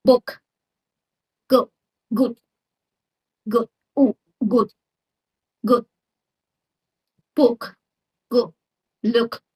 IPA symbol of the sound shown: ʊ